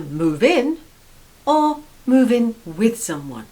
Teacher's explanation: Number 9, to move in with someone. So notice how the stress is on the preposition in.